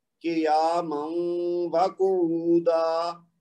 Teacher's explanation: ہم نے اس تنوین کی آواز کو اس میں مکس کر دینا ہے واو کی آواز میں غنہ کے ساتھ. تو یہ ہو گئی دوسری بات واو کی ادغام ما غنہ کی.